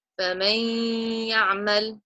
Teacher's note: So I'm going to join the sounds of the noon to the ya, but I would do a half idgham. So the noon will go into my nose. There will be a 2 count nasalization.